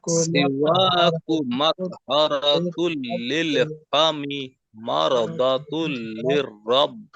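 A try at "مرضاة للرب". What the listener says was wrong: مرضات ضاد আনতে হবে, مرضات للرب.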